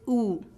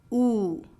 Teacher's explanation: your lips are rounded and your jaw is almost completely raised your tongue is high near the roof of your mouth